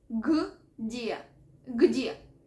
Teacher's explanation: Cuando voy a pronunciar esta palabra, voy primero a pronunciar la letra G y después G, porque son dos consonantes cerca. No tengo que meter ningún tipo de sonido suave tipo vocal, no.